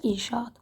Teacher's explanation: Saitin biri düşdü, biri isə uzun tələffüz edildi.